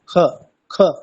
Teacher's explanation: দেখুন স্পষ্ট কিন্তু খটা বোঝা যাচ্ছে না। তাহলে কণ্ঠের একটু উপরে যদি আমরা উচ্চারণ করি খ, সেটাই হচ্ছে অর্ধেক খ।